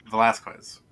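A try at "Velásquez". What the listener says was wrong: I don't think you pronounce the U. Oh, you don't pronounce the U. Yes.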